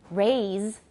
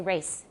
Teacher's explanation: in Taiwan English, lots of times people neglect to pronounce the Z's, right? So instead of saying, for example, raise, 就 是 提 高, raise, people will say race.